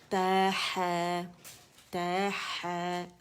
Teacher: زبان کی جڑ نیچے کریں اور فرکشن کے ساتھ آواز کو ادا کریں، ٹھیک ہے. وسط الحلق سے حا کی آواز نکلے گی.